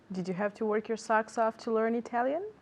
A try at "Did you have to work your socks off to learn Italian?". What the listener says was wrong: are you hearing intonation at home because I'm not hearing intonation ask me one more time